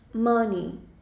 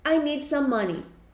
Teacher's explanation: esse E, ele meio que cai por terra, e aí a gente pronuncia o som de I.